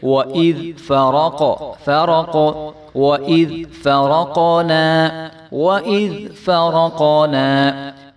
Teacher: قاف حروف قلقلہ میں سے ہے تو اس کو جو ہے ہم ہلا کر پڑھیں گے۔ وَإِذْ فرقنا بیکومل نہیں کریں گے، اس کو با کے نیچے ایک زیر ہے تو اس کو بھی ہم نے نہیں کھینچنا، اور قاف کے اوپر پیش ہے تو اس کو بالکل بھی نہیں کھینچیں گے۔